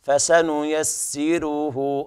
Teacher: على رواية ورش ترقيق الراء واجبة هنا